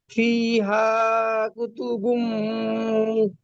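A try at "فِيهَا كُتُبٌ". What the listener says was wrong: বুম নয়, আপনার মিম বুম হয়ে যাচ্ছে, বুন।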